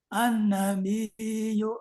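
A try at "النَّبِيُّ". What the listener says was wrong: Kurang panjang. Nunnya gunahnya kurang panjang.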